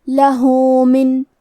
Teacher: ہا پہ الٹا پیش ہے، یہاں حکم ہے مد صلہ صغرا، تو ہم اپنی آواز دو مد کے برابر لمبی کریں گے